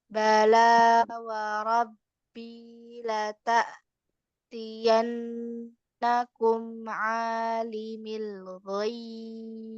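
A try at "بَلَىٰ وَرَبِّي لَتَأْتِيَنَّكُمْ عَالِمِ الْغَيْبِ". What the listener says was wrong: Ya, kayak gitu. Jadi lo-nya sedikit lebih dipanjangin dikit banget gitu. Tapi udah benar yang terakhir. Ya, jangan tiba-tiba ghaib, jangan gitu-gituin ya.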